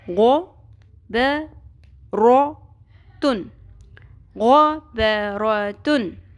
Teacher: اب یہ جو لفظ ہم پڑھ رہے ہیں اس میں آپ نے بہت خاص خیال کرنا ہے کہ جو پر حروف ہیں، غوین اور رو کے اوپر زبر ہے تو رو بھی پر ہوگا، لیکن ان کو پر کرتے کرتے ہم نے با اور تا کو پر نہیں کرنا